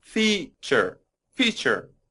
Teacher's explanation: this word has two syllables, and the stress is on the first.